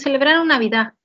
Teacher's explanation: Con el habla rápida termina en vocal y no en la consonante.